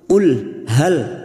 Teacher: jangan seperti dipantulkan, namanya tawalud